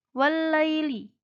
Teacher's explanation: jadi alif lam nya tidak dibaca karena alif lam bertemu dengan lam jadi dalamnya hanya dibaca satu wallaili ternyata kedua yaitu dihukumi mata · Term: Idgham Syamsiah